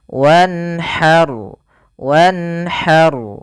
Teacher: karena nun bertemu dengan huruf halq yaitu huruf yang keluar dari tenggorokan maka dia harus dibaca dengan jelas suara nunnya.